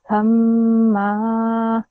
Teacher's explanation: The m sound needs to be a bit longer, okay? Because of this shadda sign.